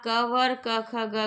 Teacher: कंठ और निचली जीभ के स्पर्श से बोले जाने वाले वर्ण कंठ कहलाते हैं। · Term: कंठ ध्वनियां